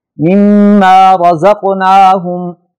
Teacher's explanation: مما میں دوسرے میم پر شد ہے لہذا اس پہ غنہ کر کے پڑھیں گے۔ رزقناہم میں قاف حروف قطب جدن میں سے ہے لہذا یہاں جھٹکا دے کے پڑھیں گے جسے قلقلہ کہا جاتا ہے۔